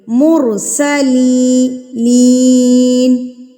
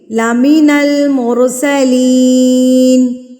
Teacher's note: اب یہاں دیکھیے آپ، ہماری وہی مثال جو ابھی میں آپ کو دے رہی تھی وہ مرسلین میں آ گئی ہے، یا ساکن اور یا ساکن سے پہلے زیر، تو اٹ مینز اس لام کو ہم کھینچیں گے، لام زیر لی کو یہاں پر ہم کھینچ کے پڑھیں گے، لمبا کر کے پڑھیں گے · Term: یا مدہ